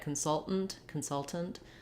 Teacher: almost no vowel in that first syllable. Then we are stressing on the salt here, like we did in the verb consult, consultant. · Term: unstressed first syllable